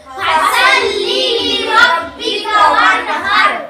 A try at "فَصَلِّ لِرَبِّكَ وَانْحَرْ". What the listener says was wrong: فصلي صلي বলা যাবে না সল্লি সল্লি সিন হলে সাল্লি হবে আর সাদ হবে সল্লি فصلي لربك وانحر